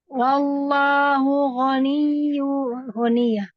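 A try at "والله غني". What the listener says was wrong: Jangan dipanjangkan jadi mat. Tapi ini berhentinya tuh kayak NIYY.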